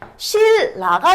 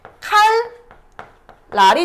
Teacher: 비음 니은이 앞뒤에 리을의 영향을 받아서 유음 리을로 바뀌어 발음되는 현상인데요. 니은이랑 리을 요렇게 있을 때요 니은이 리을로 바뀌는 거 아니면 얘 말고 여기 앞에 리을이 오는 거예요.